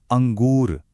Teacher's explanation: न की जो तीखी आवाज है वो सीधे नाक से आ रही है। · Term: अनुस्वार